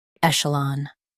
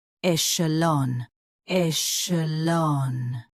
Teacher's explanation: US ends with lon. UK ends with lawn.